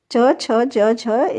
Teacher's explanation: च, छ, ज, झ स्पर्श संघर्षी है